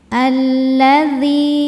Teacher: Kemudian alif lamnya adalah alif lam syamsiyah karena alif lam menghadapi huruf syamsiyah yaitu lam. Cara bacanya alif lamnya tidak dibaca ya, tidak dibaca masuk langsung ke lam yang berikutnya ya. Lamnya ini double terdiri dari lam sukun dan lam fathah.